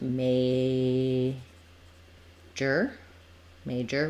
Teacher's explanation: that or is going to be pretty reduced and be an ER sound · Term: reduced second vowel